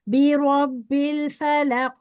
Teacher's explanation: कॉफ को आखिरी तक मोटा रखना है, ठीक है, बारीक नहीं करना है.